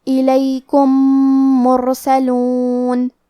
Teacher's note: کلمت الیکم کے آخری میں میم ساکن ہے، پھر حرف المیم ہے کلمت مرسلون، یہاں بھی حکم ہے ادغام متماثلین صغیر، ہم پہلے میم کو دوسرے میم میں ملا کے ایک ہی میم غنہ اور تشدید کے ساتھ پڑھیں گے